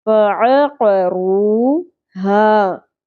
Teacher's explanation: رو ایک الف کے برابر کھینچیں گے، واو ساکن سے پہلے پیش، فَعَقَرُوهَا مد اصلی ایک الف کے برابر کھینچیں گے، فَعَقَرُوهَا.